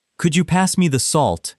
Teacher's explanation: with a slight rise on salt is courteous. A flat or falling tone can sound like an order. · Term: polite rise